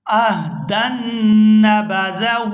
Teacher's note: یہاں دال کو نون شدد کے ساتھ ملائیں گے تو گنہ کریں گے